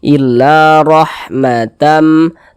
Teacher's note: kalau dia memiliki nih harakat fathah atau tanda baca fathah maka huruf ro dibaca tafkhim baca tebal tebalkan huruf r-nya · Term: tabkhim